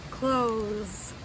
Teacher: but we don't pronounce it like we usually do it's tricky it's just close like an s sound instead of a th sound